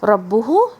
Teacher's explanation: با کو آپ نے لپس کو پریس کرنا ہے، اور را بھاری پڑھنی ہے، اور یہاں پہ 2 کاؤنٹس دینے ہیں.